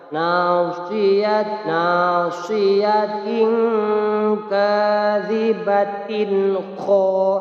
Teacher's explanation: Iya betul, ikhfa hakiki. Tanwin bertemu huruf kaf, bacanya harus samar dan didengungkan 2 harokat.